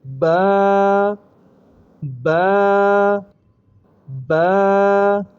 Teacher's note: دونوں ہونٹوں کو آپس میں ملا دیں گے، اوپر والے نیچے والے کو